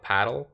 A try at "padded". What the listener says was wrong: there's no l where's the l it's not there